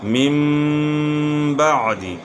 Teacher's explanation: نون ساکن کے بعد حرف با آ گئی ہے تو نون کی آواز میم سے بدل گئی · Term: اقلاب